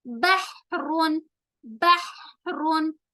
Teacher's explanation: हा की आवाज दरमियानी हलक से रगड़ खाकर निकलती है, यानी हा हलक के बीच से निकलती है और हलक को रगड़ कर, यानी ऐसा फील होता है कि हा की आवाज हलक के साथ टकरा कर बाहर निकल रही है।